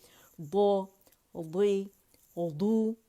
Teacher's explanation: 2 موٹے سائڈوں سے جو حافۃ اللسان جب جا کے اوپر کے 5 داڑیں رائٹ لیفٹ کو لگائیں گے آپ تو دو کی آواز وہاں سے نکلے گی